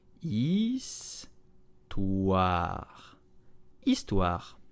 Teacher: The H is silent, so begin on the vowel.